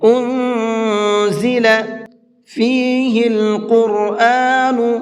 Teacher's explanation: قاف کو بھی اور را کو بھی دونوں کو منہ بھر کے پڑھیں گے۔